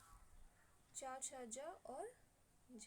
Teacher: स्पर्श संघर्षी व्यंजन हमारे ऐसे व्यंजन होते हैं कि जिनमें उच्चारण का समय अपेक्षाकृत अधिक होता है और उच्चारण के बाद वाला भाग जो होता है संघर्षी हो जाता है। इस वजह से हम ऐसे व्यंजनों को स्पर्श संघर्षी व्यंजन कहते हैं।